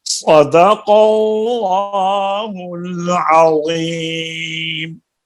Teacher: اور پھر اللہ کے لفظ کو بھی موٹا کریں. صدق اللہ العظیم. · صاد کی سیٹی اور اس کو موٹا کریں اور قاف کو بھی پر کریں. صدق اللہ، اور پھر اللہ کے لفظ کو بھی موٹا کریں.